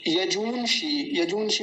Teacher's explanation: बड़े ऊ की मात्रा है तो थोड़ा लंबा खींचेंगे, मूर्धन्य शकार का ध्यान रखेंगे।